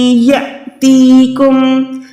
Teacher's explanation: حمزہ ساکن ہوتا ہے تو ہم نے وہاں پر ہر حال میں جھٹکا دینا ہے۔ ایک ہو گیا لمبا یا، دوسرا ہو گیا جھٹکے والا، جھٹکے والا کیسے؟